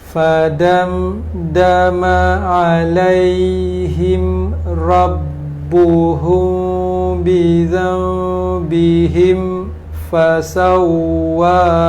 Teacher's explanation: izhar syafawi, mim mati bertemu dengan fa